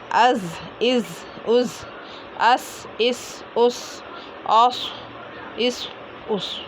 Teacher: ज़ा सीन सौद ज़बान की नोक और सामने के ऊपर नीचे वाले 4 दांतों के किनारे से अदा होते हैं